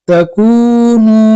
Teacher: نون کے اوپر پیش ہے پیش کو جلدی پڑھے تھوڑا بھی نہ کھینچے